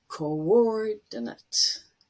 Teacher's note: And the next one is interesting because when you look at it, it looks like oo as in blue, but ko and or are actually separate syllables. And the stress is on or.